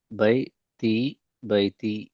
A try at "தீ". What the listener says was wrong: போதாது. தீ தீ தீ தீ ஆ தை தீ.